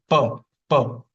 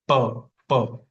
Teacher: the air is obstructed by the lips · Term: Oshia